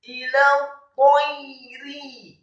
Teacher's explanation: Ta-nya setelah ditasydidkan fathah satu harokat, kemudian ya-nya dibaca sukun dan tipis. Ila tayri, kemudian ro-nya dibaca tipis kasrah.